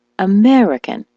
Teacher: the word American, as you know, is stressed on the me